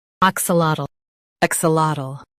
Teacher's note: Stress ak and say lat clearly. The ul is soft.